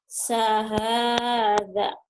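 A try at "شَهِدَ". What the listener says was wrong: Shin. Syahada. Sahadanya diulang, Bu. Tadi salah, Bu. Syahada.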